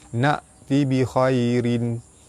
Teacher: Pada atas bertemu dengan ya di tengah kalimah, hukum dia maklin, dibaca lembut, panjang 2 harkat